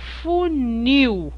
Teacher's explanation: Olha, repare que ao pronunciar a palavra funil, nós damos muito mais ênfase a esta sílaba, funil. O nil é muito mais forte que o U. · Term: sílaba tônica